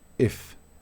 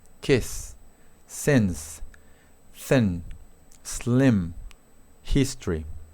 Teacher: Esta I corta no es común, es como rara, porque es como una mezcla de I tirando a E.